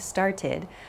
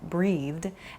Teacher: 3 past tense verb sounds to listen for: an id sound, started, a soft D sound like breathed, and then a more hard T sound like walked